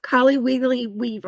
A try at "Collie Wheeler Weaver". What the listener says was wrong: No, there's no wiggly. It's Wheeler. Collie Wheeler Weaver.